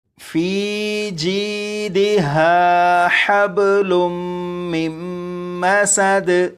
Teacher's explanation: یہاں پر سین ہے، سین کو سختی سے پڑھیں گے، یعنی سیٹی کی آواز کے ساتھ پڑھیں گے